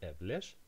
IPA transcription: evler